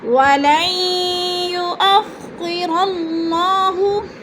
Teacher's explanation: وَلَن، لام کو یا کے ساتھ ملا کر ادغام کریں گے۔ درمیان والا نون ساکن لکھنے میں آتا ہے، پڑھنے میں نہیں آتا